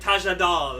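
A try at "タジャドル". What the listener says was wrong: It's Tajadoru, because Condor, not Condol.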